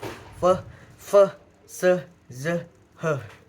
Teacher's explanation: Lalu yang kedua ada geseran frikatif, yaitu aliran udara dipersempit sehingga menghasilkan bunyi gesekan